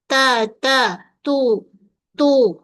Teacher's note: hujung lidah menyentuh pada belakang gigi kacip atas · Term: huruf ta